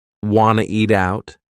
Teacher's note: we've dropped the question word completely